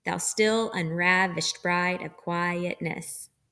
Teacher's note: each line of the poem is composed of five iambs so five groups of unstressed stressed syllables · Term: iambic pentameter